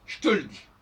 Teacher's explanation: Et on ne peut même pas dire qu'il y a un E, c'est simplement le contact entre deux consonnes.